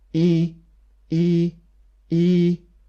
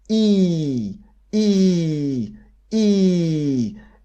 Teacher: it is the most tense sound and it's more tense than polish e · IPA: iː